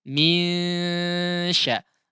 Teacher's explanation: n-nya itu disamarkan, tidak disampaikan kepada makhrajnya, tidak ditempelkan lidahnya kepada gusinya. Misya, disamarkan n-nya. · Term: ikhfa